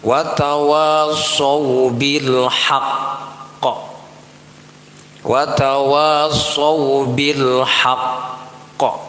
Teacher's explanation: cara berhentinya ditahan sedikit baru dipantulkan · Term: qalqalah akbar